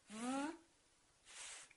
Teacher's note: The only difference between the V and the F is that V is voiced and F is voiceless. Otherwise the lips are doing exactly the same thing.